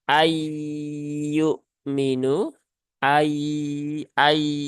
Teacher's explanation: dia tidak masuk ke rongga hidung maka dia masuknya ke aljauf berarti dia hanya menahan ya dengan lebih lama saja ya tidak ada gunahnya sehingga praktiknya menjadi kurang kurang sesuai dan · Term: Idam